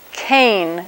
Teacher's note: That's a velar stop. A voiceless velar stop is what we think of as a K